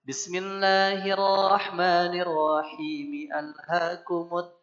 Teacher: Maka kalau diwasal dari bismillah, bacanya a-nya tetap harus tampak. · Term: hamzah qata